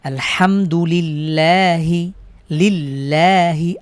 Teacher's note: আল্লাহ শব্দের পূর্বে জের হয়েছে বিধায় পাতলা করে আমরা পড়ছি